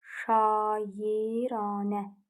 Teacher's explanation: İki dənə uzanma var və arasına Y əlavə olunur.